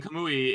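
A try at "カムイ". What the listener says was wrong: Kamui. You're saying Kamui? It's the emphasis is on the wrong syllable. Emphasis in syllable.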